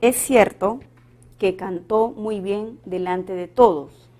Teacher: Entonces aquí tenemos un fonema suprasegmental. El tono final de la oración es descendente y podríamos cambiarlo a una pregunta.